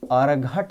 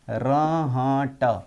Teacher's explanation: महाप्राण ध्वनि ह में बदलती है, इसीलिए घ ध्वनि देखिए ह में बदल गई। अकारण अनुनासिकता भी है।